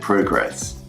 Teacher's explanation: in the noun form you stress the first part of the word where it's in the verb form you stress the second part